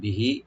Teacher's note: বিহি বি থাকবে আর হি এক আলিফ করে টানবেন